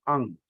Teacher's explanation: अंग का उच्चार हम जब करते हैं, तो कंठ से और अपने नासिका से, दोनों का हम इस्तेमाल करते हैं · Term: निगहित